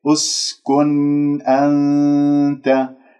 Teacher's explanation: عندك همزة وصل، والسين يجري فيها الصوت والنفس من أحرف الصفير، النون ساكنة، جاء بعدها الهمزة من كلمة أنت، راح تكون مظهرة ، لأنه الهمزة من حروف الإظهار الحلقية الستة، الهمزة والهاء والعين · لا تسحب ضمة الميم من كلمة آدم إلى السين اسكن، لأنه عندك همزة وصل،